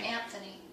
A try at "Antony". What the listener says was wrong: There's not, no H. Mark Antony.